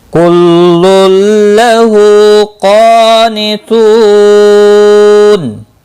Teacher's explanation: واو مدہ ہے، ایک الف کے برابر کھینچ کر پڑھیں گے اور وقف کی صورت میں نون ساکن پڑھا جائے گا، وقف بالاسکان ہوگا، 3 سے 5 الف کے برابر کھینچ کر وقف کریں گے۔